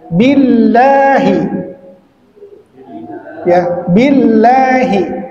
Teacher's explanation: jika sebelumnya dia bertemu dengan huruf atau diawali dengan bacaan berharokat kasrah, dia menjadi tarqiq atau tipis